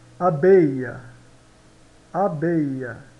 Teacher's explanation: o e no final não se pronúncia quase mas se pronuncia quase como um a